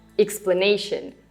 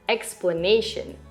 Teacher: For example, in the word explanation, the primary, stronger stress goes on the third syllable. But the first syllable is also slightly stressed. That's why you don't say it as explanation, you say it as explanation. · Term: secondary stress